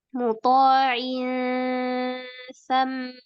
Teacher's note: Ikhfanya samarkan sedikit suaranya. Jangan langsung menempel di sa.